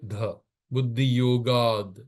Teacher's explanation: the t with a halant and dh becomes d